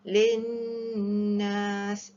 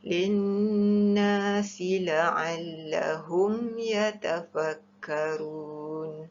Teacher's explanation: Wajib dengung, wajibal gunnah iaitu nun bertanda sabdu.